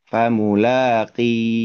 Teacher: maka huruf ha ini disukunkan karena waqaf tadi.